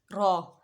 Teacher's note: मसूड़ों से लगेगी तो र अदा होगी र यह इसके लिए जबान की पुष्ट जुबान के किनारे की पुष्ट और ऊपर वाले तीन दांतों के मसूड़े इस्तेमाल होते हैं